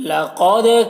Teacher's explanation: لقد قاف کو پر پڑھیں گے، دال میں قلقلہ کریں گے